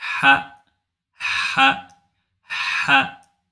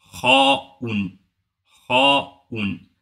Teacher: Le son est différent du kha que du ha, ha. Le son est faible, tandis que le kha, le son est fort.